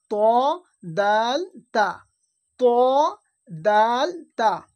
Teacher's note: তিনটে অক্ষর, ত, তা, দাল, এই তিনটে অক্ষরের উচ্চারণ একই জায়গা থেকে হয়, জিবের আগা এবং সামনের উপরের দুই দাঁতের গোড়ার সাথে লাগিয়ে উচ্চারণ হয়